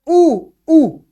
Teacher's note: ऊ की जो आवाज आती है वो हमारे होठों से या ओष्ठ से आती है